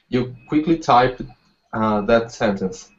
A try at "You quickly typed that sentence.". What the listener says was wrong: Good. You quickly type that sentence. So you emphasize quickly. Good.